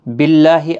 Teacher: اللہ کا لام زیر کی وجہ سے باریک پڑھا جائے گا، اس کے اوپر کھڑی زبر بھی ہے، ایک الف کی مقدار کے برابر کھینچ کر بھی پڑھیں گے۔